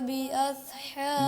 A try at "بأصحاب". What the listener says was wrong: بأصحا، بأصحا، صاد کو موٹا پڑھیں گے، بأصحاب الفیل، بأص بأصحا، زبان کے نوک سے نہیں پڑھنے اس کو، بأصحا صاد، بأصحا، بأصحاب الفیل، اس کو ٹھیک کر لینا ہے جی۔